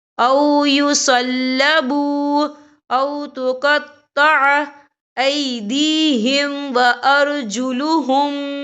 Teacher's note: واو ساکن سے پہلے پیش ہے اور اس پر چھوٹی سی مد بھی ہے، تو ہم یہاں 3 یا 4 حرکت کے برابر کھینچ کے پڑھیں گے۔ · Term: واو مدہ